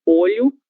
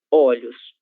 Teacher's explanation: O O ele se abre quando nós vamos mudar do singular para o plural.